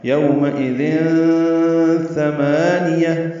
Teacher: تنوین کے بعد ثا آنے کی وجہ سے اخفا ہے